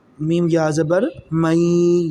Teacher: دیکھیں جی، میم کے ساتھ ہے جی نون، نون کے اوپر جزم ہے، کیا ہے جی جزم، میم کے اوپر زبر نون کے اوپر جزم، میم نون زبر من ہے نا، آگے یا کے اوپر شد آ گئی تو ہم میم کو یا کے ساتھ ملائیں گے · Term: ادغام